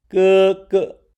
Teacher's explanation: the first 哥 (gē) is pronounced with the first tone, while the second 哥 (gē) has a shortened tone.